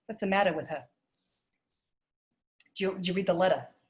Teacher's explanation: Whatever it is, you're dropping the R. And the switching from a hard T to a D in medial placement